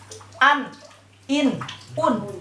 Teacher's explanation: Tidak boleh ada gunnah. Tidak boleh ada khoisum. Tidak boleh masuk ke pangkal hidung. Tidak boleh dibaca an, in, un.